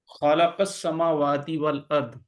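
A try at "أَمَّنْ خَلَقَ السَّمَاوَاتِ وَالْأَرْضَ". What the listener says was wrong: نہیں، میم کے اوپر کھڑی زبر پڑے نا، ذرا لمبا کر لیں، واؤ کے اوپر بھی کھڑا تھا کر لیں جی۔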